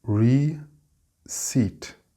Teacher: Phonetically, it is R-I-C-I-T, receipt, with the stress on the second syllable.